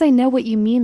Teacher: The speaker may stress no and mean.